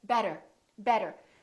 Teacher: it sounded more like a D sound D let me explain when the t is between two vowels the T sounds more like a D sound or what we call a very fast D so for example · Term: fast D sound